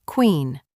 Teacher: This sound combines the K and W to create a smooth transition which is quite different from many other languages.